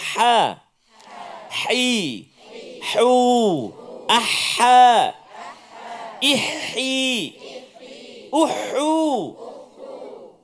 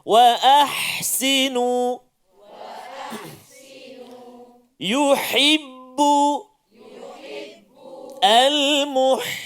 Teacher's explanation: Ini huruf ha. Di tengah rongga halqum.